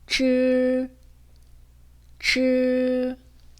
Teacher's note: 이 발음은 다른 음모와 결합해서 소리를 낼 때 쌍지읒 소리처럼 나지만 혀가 말려있는 상태에서 나는 소리예요.